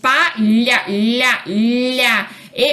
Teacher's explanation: o dorso da língua, esse dorso da língua bate no céu da boca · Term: fonema palatal